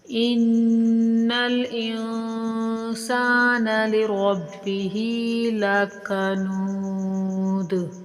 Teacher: نون کے اوپر نون مشدد کا غنہ ہوگا، نون کے اوپر تشدید آ جائے تو غنہ کیا جاتا ہے، اور اس نون پر نون ساکن کا اخفا ہوگا، یعنی کہ ناک میں آواز کو چھپاتے ہوئے پڑھیں گے۔